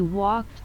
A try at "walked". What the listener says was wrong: Em đọc là walk. Em đọc là walk. Cái chữ em bỏ chết âm D ra kìa.